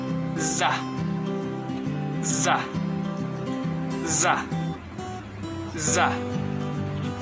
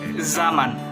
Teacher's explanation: Daerah artikulasinya terdapat pada titik pertemuan depan lidah dan batas di belakang gusi. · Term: lamino-alveolar geseran bersuara